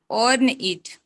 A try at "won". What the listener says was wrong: Own ने वो W है ना? Won it.